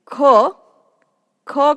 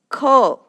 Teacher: It is an aspirated consonant. The air pressure behind the tongue is released with a little force along with a sound.